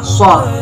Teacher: Makhrajul huruf sod terletak pada ujung lidah, berada pada halaman dua gigi seri bawah, sehingga suara sod keluar di antara dua gigi seri atas dan bawah. · Yang keempat adalah itbaq, yaitu lidah bertemu atau nempel dengan langit-langit. · Dan yang terakhir adalah sofir, yaitu suaranya berdesir.